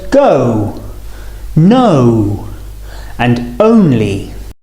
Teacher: The main difference here is the shape of the lips, rounding a little as we say the sound. O. Starting on the and finishing on the or oo.